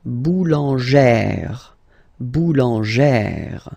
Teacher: you pronounce it like E, really open E sound. Okay, so boulanger, boulanger, and then feminine form, boulangère, boulangère.